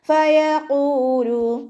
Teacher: ഖാഫ് ഇസ്തിഅ്ലാൻ്റെ ലെറ്ററാണ്, തഫ്ഹീം ചെയ്തിട്ട് ഉച്ചരിക്കുക